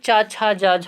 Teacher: चाछा जाझा यहाँ का उच्चारण स्थान क्या है? तालु है